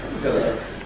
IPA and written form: ˈpɪlə (pillar)